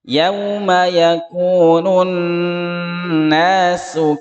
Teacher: nun tasydid dan mim tasydid dibaca dengung 2 ketukan